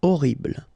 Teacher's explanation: Okay, first letter is H, but then we don't pronounce H, so you don't pronounce it. And the first thing you hear is O.